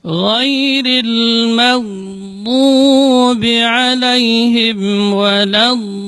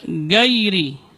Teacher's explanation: Kemudian huruf gha juga sering di sini tidak boleh ada getaran karena gha keluarnya dari ujung tenggorokan. Adnal halq, dari ujung tenggorokan, dan dia bukan huruf tikrar. Dan tidak juga dibaca syiddah.